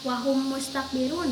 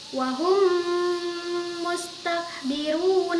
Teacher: ada suara dengung dimasukkan pada huruf mim di depannya dengan suara dengung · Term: idgham syafawi